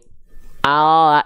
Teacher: yang disentuhkan hanya bagian ujung akhir lidah saja ya kalau l-nya begini l alfabetnya begini Al Al yang nempel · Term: huruf L pada abjat